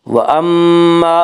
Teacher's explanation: میم مشدد غنہ ہوگا، غنہ کی مقدار 1 الف ہے